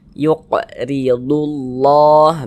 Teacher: Huruf ra memiliki tanda baca kasrah, maka dia dibaca tipis, baca tarkik, sehingga pangkalisan kita itu tidak naik terangkat ke atas.